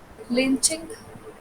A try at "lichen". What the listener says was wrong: No, it's pronounced as lichen. ch is pronounced as like k.